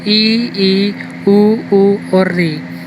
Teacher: संवृत स्वर, संवृत का मतलब है सम और वृत्त से बना है, मतलब वृत्त के समान, ऐसे स्वर जिनका मुख सबसे कम खुलता है, जिनके उच्चारण में सबसे कम मुख खुलता है, संवृत स्वर कहलाते हैं, जिनकी संख्या है 5।